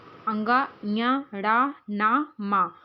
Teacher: अनुनासिक स्वरों जैसे अंग ञ ड़ न मा के उच्चारण में वायु या ध्वनि मुख से के साथ-साथ नाक से भी निकलती है